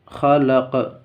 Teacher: اس لیے کہ قاف حروف قلقلہ میں سے ہے اور اس پر جزم بھی ہے